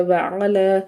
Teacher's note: لام کے اوپر کھڑا زبر ہے، اس کو بھی ایک الف کے برابر کھینچ کے پڑھنا ہے